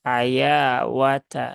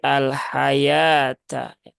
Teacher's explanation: wau di sini ini tidak tidak dibaca ya · waw di sini ini tidak dibaca ya. Jadi jangan dibaca dengan al-hayawata ya.